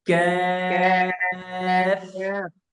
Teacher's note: কাফটা হলো জিহ্বার একটু সামন থেকে